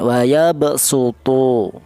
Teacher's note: cara bacanya wayabsutu yang huruf shod ini dibaca dengan huruf sin